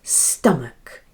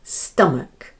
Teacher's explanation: that naughty little schwa sound, for unstressed vowel sound, ah, and the ch sounds k